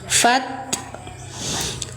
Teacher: jedah suara ta kemudian lepas dari makhraj sambil kasih percikan nafas atau hames